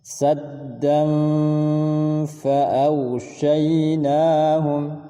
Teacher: Kemudian setelahnya fa, ikhfa, disamar-samarkan bunyi annya, saddan, dan didengungkan 2 harakat sebelum menyebut huruf fa